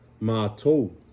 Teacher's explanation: the reason why we get that O sound on mato is because of the diphthong, O-U.